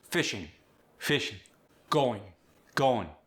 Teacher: When you got the ing, you drop the G.